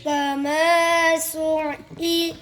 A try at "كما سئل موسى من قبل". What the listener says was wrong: फिर आइन बना रहे होना पूरा من قبل।